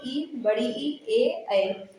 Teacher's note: उसके बाद ये हमारे मुख के यानी कि अग्र भाग यानी कि जीभ के आधार पर ये बांटे जाते हैं। अग्र स्वर मध्य स्वर पश्च स्वर। अग्र स्वर में आते हैं इ बड़ी ई ए ऐ।